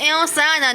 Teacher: ان پہ ہو رہا ہے نون مشدد ہے, ان پہ غنہ کریں گے. انسان نون ساکن کے بعد سین آ رہا ہے تو اخفا ہو رہا ہے